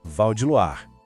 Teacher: O Val é rápido, direto. Em Loire, a combinação OI tem um som de UA. Pensa na palavra luar.